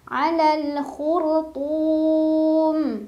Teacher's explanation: Jadinya ro-nya dibaca tebal dengan pangkal lidah yang naik. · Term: tafkhim